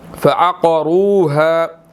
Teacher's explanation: قاف جو ہے وہ یہاں پر موٹا ہے، را بھی موٹا ہے، اس کے اوپر پیش ہے